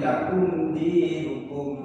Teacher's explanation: Jadi menjelaskan huruf suara mim sukun ini kalau ketemu dengan huruf idhar syafawi, jadi huruf idhar itu dijelaskan. Jadi tanpa ada dengung. Berapa panjangnya? Yaitu satu ketukan, satu harokat saja. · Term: idhar safawi